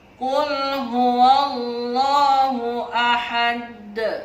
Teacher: Ada huruf dal di akhir kalimat, namanya qalqalah kubra. Dia memantul dengan nada yang agak tebal dan agak besar.